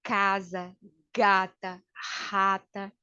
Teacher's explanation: E o velar, que é produzido lá atrás, como casa, gata, rata